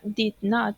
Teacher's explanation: sería un tono más formal haciendo énfasis en not